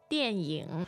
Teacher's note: your tones are fourth and third